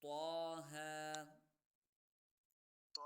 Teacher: طه کو میں نے ایک الف کی مقدار کھینچا کیونکہ اس کے اوپر مد نہیں ہے